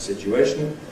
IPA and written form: ˌsɪʧuˈeɪʃn̩ (situation)